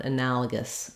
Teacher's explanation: a reduced vowel, schwa. You might even hear it as an I sound, analogous.